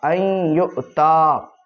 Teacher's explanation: نون کا ادغام کر دیں گے یا میں، اور یا کو دو بار پڑھیں گے